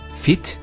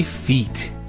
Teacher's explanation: We don't say fit, we say feet. There's an elongation of the E sound.